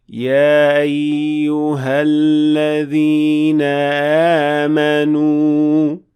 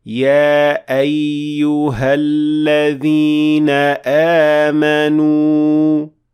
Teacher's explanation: you should always make sure that you're making that cutting sound of hamza produced by closing down the vocal cords completely. And say, يا أيها الذين آمنوا.